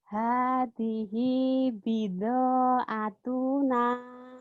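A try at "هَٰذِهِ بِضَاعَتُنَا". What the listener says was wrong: Tuhnya pendek. Atuna. Kan ada lagu. Atuna.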